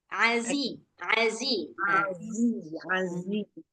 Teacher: zainya ini agak dikuatkan lagi dia suara sofirnya